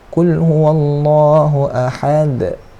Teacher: Ada qalqalah ataupun lantunan. Lantunan sekali je.